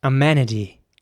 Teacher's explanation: in american english it would be pronounced more like amenity with an ä sound in the middle so the e is pronounced more like an a amenity and